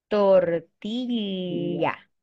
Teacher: But in Spanish, we have the double L, that it's ya.